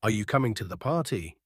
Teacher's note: The Voice will typically rise at the end showing it's a yes or no question